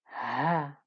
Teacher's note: it's a lot more breathy isn't it actually comes from the middle of the throat